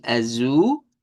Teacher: palabra que termina con l que se pronuncia con u · Ya de allí tenemos otro más que sería el azul, que en este caso es palabra que termina con L y que se pronuncia con U.